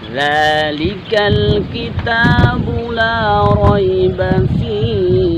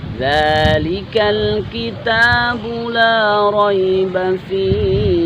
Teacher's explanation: Ingat di sini zal harus lidah kita keluarkan.